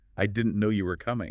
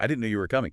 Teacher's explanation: try it with a little lift, a little emphasis on no and coming. Like, I didn't know you were coming.